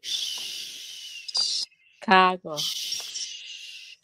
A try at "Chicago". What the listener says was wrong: Chicago. Chicago. Người Việt mình hay nói là Chicago nha. Nhưng tại vì họ thấy cái chữ CH, cái kêu là Chicago. No. Chicago.